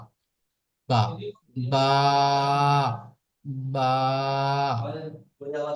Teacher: বা উচ্চারিত হয় দুই ঠোঁটের শুকনো অংশ হইতে উচ্চারিত হয় বা।